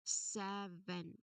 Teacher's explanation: it is a two-syllable word where the first syllable really carries the primary stress